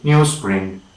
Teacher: the voiced z slowly become voiceless s, and we say newsprint. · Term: assimilation